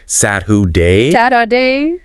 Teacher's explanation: that's the disappearing R. A lot of speakers, especially in American English, will just sort of swallow it. So it sounds more like Saturday.